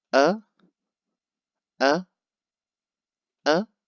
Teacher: with the uphill or high pitched uh, uh, uh, going up a little bit